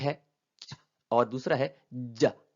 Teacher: مطلب، افریکیٹس، ان دونوں کا ایک ہی مجموعہ ہے، وہ plosives سے شروع ہوتے ہیں اور fricatives پر ختم ہوتے ہیں